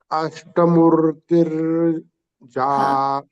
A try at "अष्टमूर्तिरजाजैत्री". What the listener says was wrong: Okay, there we should not take a pause, or we should not say murtir. It is like this. अष्टमूर्तिरजाजैत्री. It has to come continuously. Ashtamurtirajajayatri. So, Murtir we should not come. Ashtamurtir should not come. Ashtamurtirajajayatri.